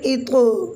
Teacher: تو کو ہم نے قلقلہ کے ساتھ موٹا پڑھا، کیونکہ تو حروف قلقلہ میں سے ہے